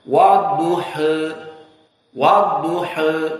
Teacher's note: Madhab yang kedua turun dari tegak fathah miring sedikit dinamakan taklil. Dan taklil ini turun cenderung kepada kasrah namun sedikit.